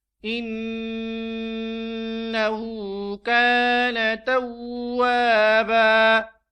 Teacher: توابا، واو کے بعد الف ہے اور الف سے پہلے واو کے اوپر زبر ہے، تو اس کو وہی الف کی مقدار کے برابر پڑھیں گے. اور وقف کی حالت میں یہ جو توابن ہے اس میں سے ایک زبر ہم نے منہا کر دی ہے اور باقی ایک زبر آ گئی ہے، تو اب ہم اس کو توابا وقف کی حالت میں پڑھیں گے.